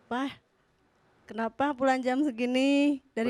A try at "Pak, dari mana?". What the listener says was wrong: Beneran gitu Pak ngomongnya? Nadanya? Kurang keras. Kerasin lagi.